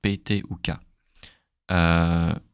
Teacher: We also don't use much air when you say the P, T ou K